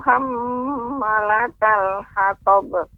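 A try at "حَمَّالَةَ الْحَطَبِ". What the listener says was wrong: Ma-nya juga panjang hammalatal. Diulangi Jadi catatan untuk nenek yaitu lebih fokus lagi kepada panjang pendeknya, lebih lagi diperhatikan ya.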